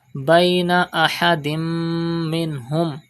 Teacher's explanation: The rule Idgham will be done and Gunna will be done in Tanween.